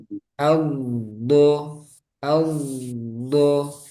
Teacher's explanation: ada sifat tambahan yaitu istitalah memanjang suaranya itu memanjang